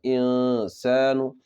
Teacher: اخفا کرنا ہے، نون کی آواز کو ناک میں چھپانا ہے، انسان، میم مشدد کا گنہ ہوگا، میم، خا کی ادائیگی، آخر میں قلقلہ، خلق، خلق۔